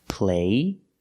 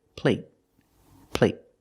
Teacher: when you have a T at the end, a stop T, it makes the vowel shorter. · There's no stop T, so the vowel is longer here.